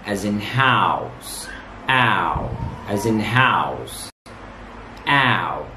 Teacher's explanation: In pronouncing the vowel sound ow as in house, the lips start not rounded. But when we move to pronounce the second part of the vowel sound ow as in house, the lips begin to close and become tense. The tongue moves from relaxed, low position to a high position.